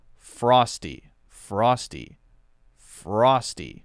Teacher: each word before it and after it all I'm doing is curling my tongue up toward the roof of my mouth now I'm not actually touching the tip of my tongue on the roof of my mouth it shouldn't touch but it has to be curled so maybe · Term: American R sound